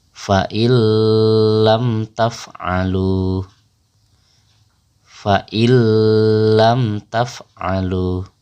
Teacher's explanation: Jadi huruf nun itu kita lebur bacaannya kepada huruf lam. Nunnya hilang tapi lamnya menjadi double atau bertasdid. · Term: idgham bila gunnah